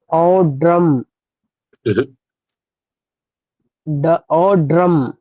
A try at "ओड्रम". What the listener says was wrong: ओ औ नहीं, ओ।